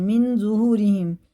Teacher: اخفا اور غنہ کر کے اس نون کو پڑھنا، ناک میں لے جا کر 1 الف کے برابر سائلنٹ کر کے پڑھنا ہے